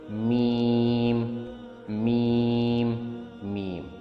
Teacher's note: جب اپر اور lower lips کو ایک دوسرے سے ملاتے ہیں تو ہوا کو بلاک کرتے ہوئے میم نکالتے ہیں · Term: لیبیل ساؤنڈ